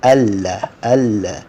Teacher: یہ لفظ ادغام کی وجہ سے نون لام میں چھپ گیا